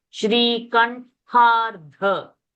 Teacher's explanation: Tha Mahaprana and Dha also Mahaprana. Shri Kantha. So there is consecutive expulsion of air.